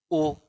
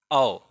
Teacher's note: अर्थात आ और ऊ से मिला है तो आ का हो गया कंठ और ऊ का हो गया ओष्ठ, इसलिए इसका जो उच्चारण स्थान हो जाएगा वो क्या हो जाएगा, कंठोष्ठ